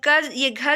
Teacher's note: घ जो होता है ये आपके कंठ से उच्चारित होता है